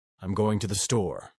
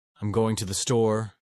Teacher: Californians often raise their tone at the end of sentences, making everything sound like a question. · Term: the uptalk